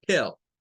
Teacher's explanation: Esa E suena como una E del español y es tell. Y de hecho es la sílaba tónica, la sílaba que tiene más fuerza